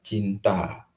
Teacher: N dan T sama-sama kita ketahui merupakan bunyi apikudental